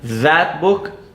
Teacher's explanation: the tongue extends between the upper and lower teeth and it vibrates more or less when you pronounce the word that book